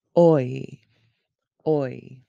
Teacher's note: Begin with oh and move to ee. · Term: oi diphthong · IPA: /oi/